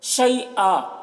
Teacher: یا لین ہے، اسے جلد پڑھنا ہے